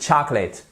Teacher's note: Faites bien attention, vous voyez, vous avez une apostrophe ici qui indique que vous avez un stress, c'est-à-dire un accent tonique. Et c'est donc la première syllabe qu'il faut accentuer.